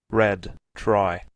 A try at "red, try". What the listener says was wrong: Red, red, try. So you have to soften the R. Don't pronounce like Spanish. In Spanish, it's very strong. In English, we're going to mark it different. Red, try, red, try.